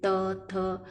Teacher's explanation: आपकी जबान दांत से टच होती है। त, थ, आपके पूरे इस वर्ग के जितने भी वर्ड्स है वो सारे के सारे दांत को टच करते हुए ही बोले जाते हैं। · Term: दंत्य